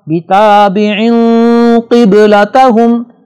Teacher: با پر جزم ہے لہذا اس کو جھٹکا دے کے ہم پڑھیں گے